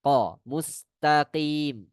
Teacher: Huruf qa ini hurufnya di bagian eh an- langit-langit ya, paling belakang antara daging yang eh dia di bagian yang lunak, huruf qaf di bagian yang lunak.